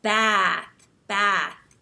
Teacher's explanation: smile and you have this wide mouth wide set mouth and you hold your tongue up high and when you talk you have a more nasal sound because American English tends to be a little bit more nasal